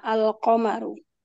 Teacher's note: Alqamaru tetap dibaca alif lamnya tidak dilebur ke qof. Tidak aqamaru. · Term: izhar qamariyah